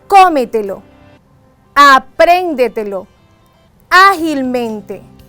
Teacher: se acentúan en la anterior a la antepenúltima sílaba. Siempre llevan tilde, siempre llevan tilde.